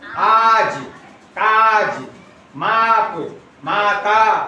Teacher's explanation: ये हो गए दीर्घ स्वर, जिनका बोलने में समय ज्यादा लगता है।